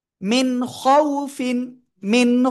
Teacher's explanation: নুন সাকিনের পরে ইজহারের অক্ষর হামজা হা, আইন হা, গইন খ, ওই 6টার একটা অক্ষর এখানে আসছে, এজন্য আমরা স্পষ্ট করে পড়ব। মিন, মিম নুনজের মিন, খ ওয়াও জবর খৌ, খৌ খৌ, ফা দুইজের ফিন, খৌ ফিন।